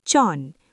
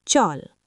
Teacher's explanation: Disebabkan lo ling berada di akhir suku kata, ia berubah menjadi huruf N.